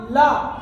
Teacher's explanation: देखो मैं आपको बताऊं, जो पार्श्विक व्यंजन होता है ना, इसका जब हम उच्चारण करेंगे, इसके उच्चारण करने से वायु जो है हमारी जो जीभ होती है उसके दोनों साइडों से बाहर निकलती है।